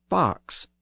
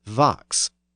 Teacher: The word is actually spelled V-O-X. There we see the voicing of that initial sound so that the F became a V.